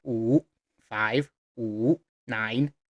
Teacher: The third tone in Chinese is dipping. Pull your voice down and up.